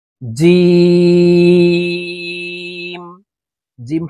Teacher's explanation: জিম হরফ তিন আলিফ টেনে পড়তে হবে জিম হাফ হালকের মধ্যখান থেকে উচ্চারণ হবে কারণ হার মাখরজ হালকের